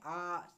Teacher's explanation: विवृत स्वर यानी सबसे अधिक मुख हमारा इसमें खुलता है